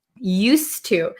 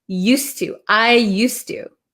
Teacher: So this D kind of disappears because it's followed by a T. Used to. And it's not going to be a Z sound.